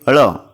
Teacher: मूर्धन्य किसे कहते हैं फ्रेंड्स, वो तालू वाले जो अल्फाज होते हैं, जैसे कि अड़, ये जो तो तालू से ज़बान की नोक तालू पर लग रही है, तो उसे जो तो मूर्धन्य कहा जाएगा।